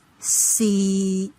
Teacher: For tone 6, C, it is flat and low. It is on the mid-low level.